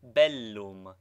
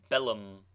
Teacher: doubled consonants should both be sounded contrary to the custom of English